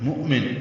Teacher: یہ حمزہ ساکن جھٹکے سے پڑھا جائے گا